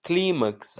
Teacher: Climax, a força não está no max, está no cli.